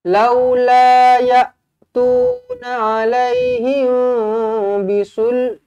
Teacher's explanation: mim kosong bertemu dengan ba ikhfa syafawi, didengungkan 2 harakat.